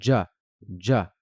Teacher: c'est comme s'il y avait un petit d juste avant avant le J · Le jim va se prononcer un peu comme en anglais, comme quand on dit Jim ou bien John, d'accord? C'est comme s'il y avait un petit D juste avant le J. Donc on va dire ja, ja.